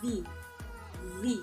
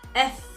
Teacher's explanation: So both of those sounds are formed in the same way in the mouth. So the difference between them is that V is voice, but F is voiceless